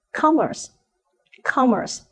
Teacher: mispronounced as Commerce with the stress on the second syllable but the stress actually falls on the first syllable